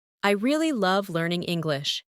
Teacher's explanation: Emphasize really and love.